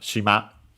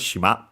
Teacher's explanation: Should be accented on the last syllable.